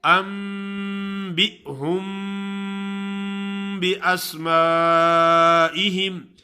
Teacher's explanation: انبئہم، انبئہم باسماء، انبئہم اگر ملا کے پڑھیں گے تو انبئہم باسمائہم، کیونکہ میم ساکن کے بعد با آ جاتا ہے تو پھر بھی غنہ ہوتا ہے، اس کو کہتے ہیں، یہ میم کے حکم میں سے ہے، اس کو کہتے ہیں اخفاء شفوی، شفت کہتے ہیں ہونٹوں کو، تو اس وقت اس کو کہتے ہیں اخفاء شفوی.